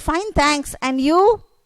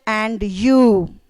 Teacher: the rising intonation that means a stress on you